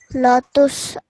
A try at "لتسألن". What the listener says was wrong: This is a hamza, okay? It's not a ayn, it's a hamza, and it's a very thin sound. So it's not an a, okay? So it becomes latus alunna.